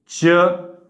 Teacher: जिभेच्या कडा आतल्या टाळूच्या म्हणजेच काय आतल्या कठोर टाळूच्या दिशेने चालतात म्हणजे आतल्या वरच्या ज्या दाढा आहे त्या दाडा त्या आतल्या भागाला